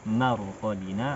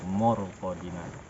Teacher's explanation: Contohnya mim marqadina, nah, dibaca mim marqadina, mor, mim mor, enggak mor tapi marqadina. Ma-nya tetap tipis karena memang sifatnya adalah istifal, suara ke bawah yang menghasilkan tipisnya suara. Marqadina bukan morqadina.